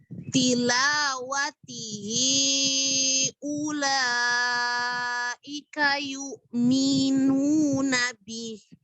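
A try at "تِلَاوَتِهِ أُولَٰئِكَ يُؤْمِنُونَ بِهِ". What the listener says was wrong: Oke, mi-nya kepanjangan yuk minuna.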